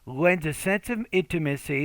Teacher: the S, which sounds like a Z, kind of blends in to the first sound of the next word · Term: blending